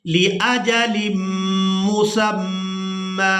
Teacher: وقف کی صورت میں میم پر 1 زبر ادا کریں گے اور اس کو 1 الف مقدار کھینچ کر ادا کریں گے۔ یا کو ہم نے یہاں پر ادا نہیں کرنا کیونکہ اس کے اوپر کوئی حرکت نہیں ہے اور یہ صرف رسم الخط ہے۔